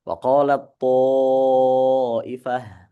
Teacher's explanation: huruf ta-nya dia idgham kamil, hilang dia dari dari situ bacaannya langsung huruf to. Wa qalat ta'ifah, bukan waqalat ta'ifah.